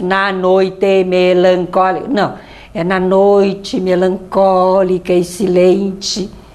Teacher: quando uma palavra termina por vogal como melancólica e a seguinte começa por vogal a gente coloca numa sílaba só para dar ritmo